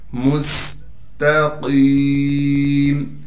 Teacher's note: اہدینا الصراط طا کو موٹا پڑھیں گے، طا کو آگے لام سے ملا دیں گے۔ مستقیم میم کو سین سے ملائیں گے، سین میں سٹی ادا کریں گے